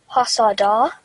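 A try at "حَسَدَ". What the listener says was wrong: So can you read it once again and giving dal only 1 second?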